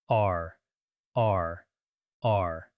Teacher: To pronounce it correctly, imagine you want to gently vibrate the back of your throat a little. It's not a very strong vibration, but a slight friction in the throat. · You should feel a slight vibration in the back of your throat as if you were gargling water very gently.